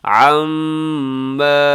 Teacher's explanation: میم مشدد یہاں غنہ ساتھ الف مدہ ہے، تھوڑا سا کھینچ کے